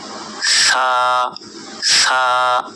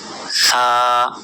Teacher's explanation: জিহ্বার আগা সামনের উপরের 2 দাঁতের আগার সঙ্গে লাগিয়ে দিয়ে এই অক্ষরটি উচ্চারণ করতে হবে। সা সা, মনে রাখবেন অবশ্যই জিহ্বা বের করে এই অক্ষরটি উচ্চারণ করতে হবে, সা।